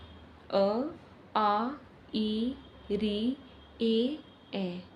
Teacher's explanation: जिन स्वरों का उच्चारण करते समय होंठ गोल नहीं होते हैं उसे अवृत्ताकार स्वर कहते हैं।